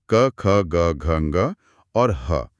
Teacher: आपको कंपन गले में ही महसूस होगा। इन्हें कंठ ध्वनियां कहते हैं।